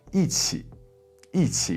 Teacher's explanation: when it's before any other tone that's not 4th tone, so 1st tone, 2nd tone, or 3rd tone, E changes into a 4th tone